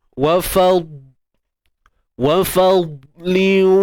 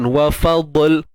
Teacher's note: Cuma ketika dia sukun, kita kena pastikan bahawa dad itu kekal tebalnya, sifat tebalnya kekal dan tiada sebarang lantunan. Ingat tu, huruf dad tebal tetapi tiada lantunan.